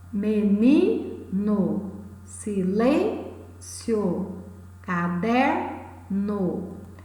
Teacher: São palavras que possuem a penúltima sílaba tônica. Portanto, são palavras paroxítonas.